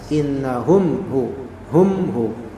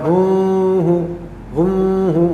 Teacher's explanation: mim mati bertemu dengan ha Hum ya maka dia menjadi izhar syafawi mimnya jelas innahum hu Hum hu bukan humu humu enggak